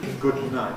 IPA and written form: ˌgʊd ˈnaɪt (good night)